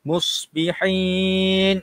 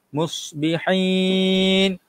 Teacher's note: sad kena ada siluan sedikit.